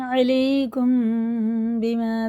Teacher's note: اب یہ دیکھیں میم ساکن کے بعد یہاں تو میم تھا، یہاں با رہا، یہ ہے اخفا شفیع، یا غنہ اور اخفا دونوں کر کے پڑھیں گے